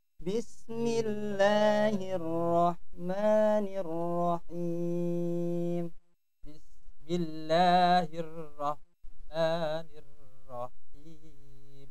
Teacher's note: Jadi ketika mad tabi'i tidak terlalu panjang. Jadi hanya 2 harokat. Mad tabi'i itu maksimal 2 harokat.